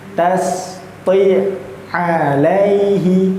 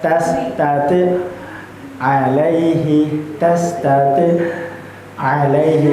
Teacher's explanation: Jadi seakan-akan bacaan kita itu pun terputus tetapi dalam satu nafas yang sama. Jadi tidak tidak ada curi-curi nafas bahasanya ngih.